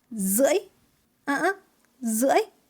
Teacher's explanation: It has a tilde tone, dấu ngã. Your voice need to deep and rise.